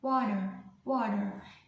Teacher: Yang ditekankan itu di syllable pertama, di huruf W-nya itu water, water.